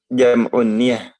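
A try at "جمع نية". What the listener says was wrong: Jam'u niyah ya. Hunaka syiddah fil ya. Ada tasdid ya.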